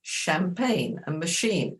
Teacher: the French who came our way they have a CH but it's a shh sound like in champagne and machine